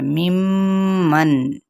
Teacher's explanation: صرف غنہ کرنا ہے، یعنی ناک میں آواز کو ٹھہراتے ہوئے۔ نون جو ساکن ہے یہاں پر ہم نے اس کو آواز کو ظاہر کر کے پڑھنا ہے، ممن، ٹھیک ہے۔